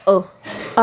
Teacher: आप ए बोलते हो तो इसमें मुंह क्या आपका फैलता है